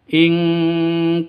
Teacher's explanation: nun mati bertemu dengan Kaf samar didengungkan siap-siap ke huruf kafnya nun matinya ditambah dengan ng ing makanya disebut dengan seperti ini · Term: Ikhfa Hakiki